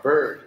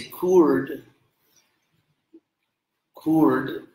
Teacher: even though it's written with an I, it's actually the vowel R